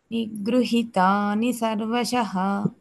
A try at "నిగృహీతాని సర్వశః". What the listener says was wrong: ఈకి దీర్ఘం ఉంది. నిగృహీతాని.